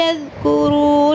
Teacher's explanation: یا بنی، یا اور نون کو لمبا کریں گے، اس را کو لمبا کریں گے، پر پڑھیں گے، لد نہیں پڑھنا، لد کورو، را کو موٹا پر کر کے پڑھیں گے اور پیش کے بعد واو آ رہا ہے